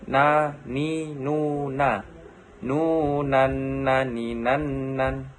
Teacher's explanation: Melafalkan huruf na dengan menyentuhkan lidah terdekat dengan langit-langit bagian depan. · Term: huruf nun